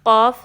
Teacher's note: حروف مستعلیہ یعنی کہ جو 7 ہیوی لیٹرز ہیں، پر حروف ہیں، ان کے ساتھ الف آ جائے تو الف کو بھی ہم پر پڑھیں گے، ہیوی پڑھیں گے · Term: ہیوی الف